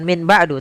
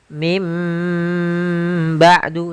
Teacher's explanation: Contoh lagi, misalkan min ketemu dengan ba'du, maka kita bacanya dengan bukan min ba'du, tapi mim ba'du sambil ditahan dengan gunnahnya. yaitu suara nun yang dirubah menjadi suara huruf mim. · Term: iqlab